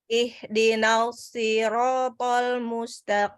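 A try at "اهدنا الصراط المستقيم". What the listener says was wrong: Tapi jangan panjangkan nanya. Ihdinas langsung.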